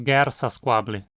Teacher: por conta da oclusiva seguinte o T muda num S